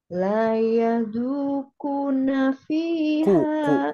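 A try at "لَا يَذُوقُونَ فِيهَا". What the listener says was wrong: Kunya kurang panjang. Kuna. La yadhuquna. La yadhuquna fiha. Nafi, langsung nafi. Kunya yang kurang, hati-hati ya. Kunya kurang.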